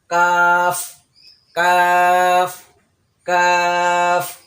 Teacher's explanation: তো কাফ উচ্চারণ করার সময় জিহ্বার গোড়া থেকে একটু আগে বাড়াইয়া, জিহ্বার যে গোড়া তার থেকে একটু আগে বাড়াইয়া তারা বরাবর উপরে তালুর সঙ্গে লাগবে, জিহ্বার গোড়া থেকে একটু উপরে তালুর সঙ্গে লাগবে।